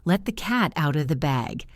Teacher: the T in let and cat can be soft or connected to the next word